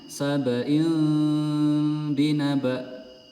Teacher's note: Jadi kasroh tanwinnya ini melebur diganti menjadi mim. Sabain binaba ya, diganti menjadi mim, kemudian langsung masuk ke ba.